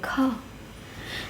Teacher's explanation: स्पर्श व्यंजन, कंठ, ध्वनि, अघोष और महाप्राण ध्वनि है